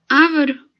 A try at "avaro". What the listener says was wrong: Na verdade, é avaro, tá? Avaro de avareza. Então, se é avaro, é uma paroxítona. Se fosse ávaro, nós teríamos que colocar um acento, tá? Então, é paroxítona.